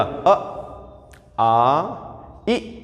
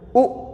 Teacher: जिनके उच्चारण में होठ हो जाए गोल, वो कैसे? व्रतमुखी।